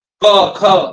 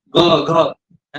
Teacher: क ख स्ट्रॉंगली बोलतात आणि ग घ थोड नॉर्मल म्हणजे मृदू